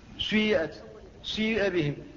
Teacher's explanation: هو إشمام الكسرة بشيء من صوت الضمة